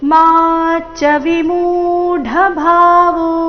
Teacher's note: ಮಾ ದೀರ್ಘ ಚ ಮುಂದಿನ ಚ ರಸ್ವ